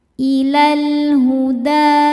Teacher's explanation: Cara bacanya lam ini dibaca dengan jelas atau disebut izhar qobari. Ilal huda. Ketika berhenti di da hukumnya adalah mad thobi'i.